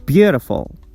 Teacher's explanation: the stress goes on the first syllable, beau. We pronounce it with a higher pitch